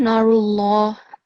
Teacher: the Allah is said with a full mouth, and if it has a kasra, then it's said with an empty mouth. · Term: thick sound